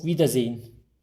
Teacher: i ve e harfi yan yana geldiğinde uzun i gibi telaffuz ediyoruz e'yi duymayacağız yani ağzımızdan e vie şeklinde çıkmayacak vi iki tane i varmış